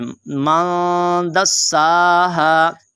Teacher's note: सीन है और सीन के ऊपर खड़ा ज़बर है, आपने इसको लंबा करना है।